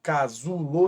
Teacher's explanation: se você falar casulo você vai perceber que o Zu é mais forte